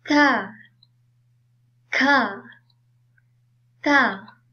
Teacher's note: bunyi mahmus, iaitu bunyi yang tidak bergetar seperti ka, ka, ta.